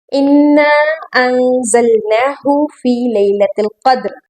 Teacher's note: अंज़लना यहाँ पर नून पर गुना करना है क्योंकि नून साकिन है और उसके बाद जा आ रहा है। जा हरूफ हल्की में से नहीं है तो इसलिए हम यहाँ पर गुना करेंगे। · आप इस पहली आयत में नोट करेंगे कि इन्ना यहाँ पर शद है और जोर से हमें मिलाना है